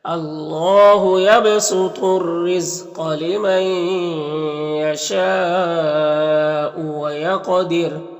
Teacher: وقف کریں گے تو را کا پیش سکون سے بدل جائے گا تو پھر را کو باریک پڑھیں گے